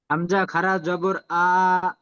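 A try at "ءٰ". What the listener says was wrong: আরো টানো, আরো টানেন, আরো টানেন। হামজা খাড়া জাবার পড়বেন।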